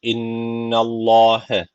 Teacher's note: Allah lafzı kalın okuyacak çünkü öncesine karşı üstten bağlanmış.